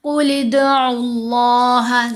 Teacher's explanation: दाल साकिन है, दाल पर कलकला होगा। कुल इद, आइन को लाम से मिलाएंगे, आइन के ऊपर पेश है।